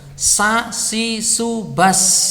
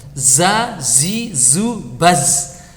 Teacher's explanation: Nah, ketika mengucapkan dalam sukun bas, udara itu mengalirnya deras sekali. Tapi kalau za tidak.